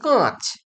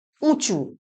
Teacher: শতনাসিক্যী ভবন কাকে বলে না, যেখানে নাসিক্য ব্যঞ্জনের কোনো সংস্রব নেই কিন্তু তা সত্ত্বেও কোনো স্বরধ্বনি স্বভাবতই বা স্বতই অনুনাসিক হয়, তখন তাকে বলা হয় শতনাসিক্যী ভবন।